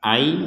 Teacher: sudah tidak terbaca an tapi dibacanya a nah kemudian disertai dengungan jadi ai ada dengungannya menjadi a seperti itu sekali lagi a